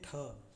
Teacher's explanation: तो इसमें इस तरीके से एस्परेट जो हा की ध्वनि निकालते हैं, सांस छोड़ने की प्रक्रिया जिससे हा की ध्वनि निकलेगी, एस्परेट्स।